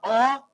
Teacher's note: जब हम बोलेंगे तो यह जीव जो है बीच में धस जा रहा है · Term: मध्य स्वर